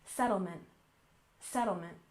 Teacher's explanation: finally we have settlement with stress on the first syllable